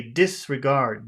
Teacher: but normally people would say disregard. Dis would be the biggest syllable.